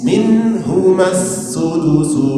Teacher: nun mati berjumpa dengan ha, itu izhar, izhar halqi. Jadi dibaca dengan jelas.